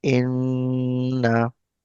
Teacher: The sound like a noon sound, like the sound of noon is n. So I'm putting my voice in our nose, so that is actually called gunna